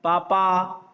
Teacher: हमारे दोनों होठ जुड़ते, प बोलते हम।